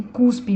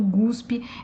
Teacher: o que acontece em cuspe virando guspe é um processo de sonorização